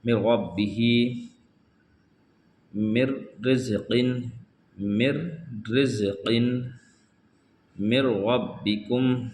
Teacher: نون کو چھوڑ دیا جائے گا، نون میم کو را سے ملا کر پڑھیں گے